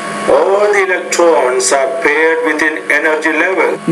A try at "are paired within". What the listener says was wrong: Not bad on the P. You're making some progress. Are paired within. So you're trying to pronounce it with more air. That's good.